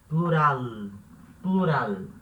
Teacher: Esse L não vai ter som de U como português, né? Plural, não.